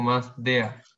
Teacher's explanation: casi que no se pronuncia la R, es como una A